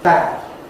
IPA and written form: bæd (bad)